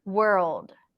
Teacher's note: if you skip the L it's going to sound like word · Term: dark l